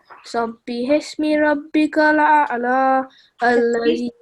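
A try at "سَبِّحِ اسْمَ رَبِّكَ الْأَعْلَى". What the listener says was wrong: Can you say Sabihisma? Look, there is a fatha. It's not hismi, it's hisma. Sabihisma.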